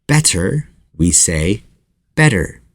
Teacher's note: a word and instead of saying for example butter for butter instead of saying the hard te sound for those letters we instead pronounce the flap T